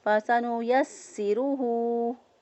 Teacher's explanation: یا کو سین کے ساتھ ملا کر مضبوطی اور قوت کے ساتھ ادا کیا سین کو